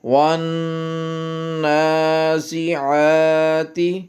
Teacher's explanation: نون کی کھڑی زبر، عین کی کھڑی زبر، ان کی لمبائی برابر